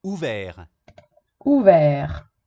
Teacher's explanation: est-ce qu'on entend le T final? Non, on ne l'entend pas.